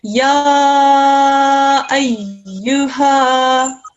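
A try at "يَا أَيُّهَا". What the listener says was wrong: so the ha's just a tiny bit longer, darling.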